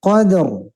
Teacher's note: dua-duanya mati, dua-duanya tetap terdengar bunyinya